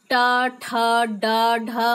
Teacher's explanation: ये ट, ठ जब हम उच्चारण करते हैं तो ये इसमें मूर्धा का प्रयोग होता है, इसीलिए टवर्ग का उच्चारण स्थान मूर्धन्य है, अर्थात मूर्धा है।